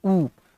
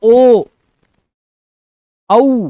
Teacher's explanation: आपने बोला ऊ, होठ गोल, गोल आकार में आ जाते हैं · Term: वृत्तमुखी